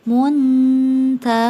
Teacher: Disebut dekat karena makhraj 3 huruf ta, dal, dan ta dekat dengan nun, sehingga saat menyembunyikannya lebih dekat ke nun. Saat membaca seperti huruf N, tidak sampai ke belakang menjadi dengung, tidak sampai eng, maka suara samarnya lebih tinggi daripada suara dengungnya. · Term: ikhfa a'la